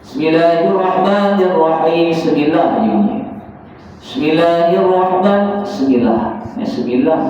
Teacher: Sin ini dia ada sifat yang namanya sifat sofir. Sifat sofir ni maksudnya dia berdesir. Dia macam bunyi ular. Sifat sofir ini sifatnya berkekalan. Dia bukan meletus.